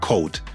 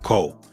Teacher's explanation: final hard consonants are typically dropped in Texas. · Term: dropping of the final consonant